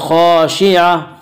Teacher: خا کو پر پڑھیں گے، خا حروف مستعلیہ میں سے ہے، حروف مستعلیہ 7 ہیں جن کا مجموعہ خصہ ضغط قز ہے جو ہمیشہ ہر حال میں پر پڑے جاتے ہیں۔